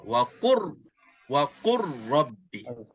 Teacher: Mutaqaribain maknanya kita akan masukkan lam ke dalam ra. Lam ke dalam ra seolah-olah lam ini tak wujud. Seolah-olah lam ini tak wujud, kita boleh baca dengan wa, qaf bagi depan, ra bagi atas, wa qur, dan ra ini berbaris atas sabdu. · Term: idgham mutaqaribain